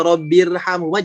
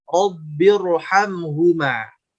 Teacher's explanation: karena ada hamzah wasol inilah huruf ro jadi tebal begitu